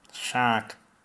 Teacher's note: a lot of the air released from somebody speaking with the Australian accent comes through the nose rather than the mouth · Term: nasal